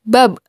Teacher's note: ketika hurufba dalam posisi mati suaranya terdengar mantul